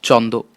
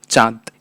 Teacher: নাসিক্য ধ্বনি দন্তন্যও বাদ পড়ল এবং চয়ের গায়ে লাগলো আনুনাসিক আকার। এভাবে চন্দ্র হয়ে উঠল চাঁদ।